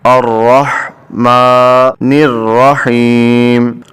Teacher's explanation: جب ہا کو پڑھیں تو ساتھ اس میں سانس کی آواز ہے، یہ حلق سے ادا ہو ، میم کے اوپر کھڑا زبر ہے، میم کھڑی زبر ما،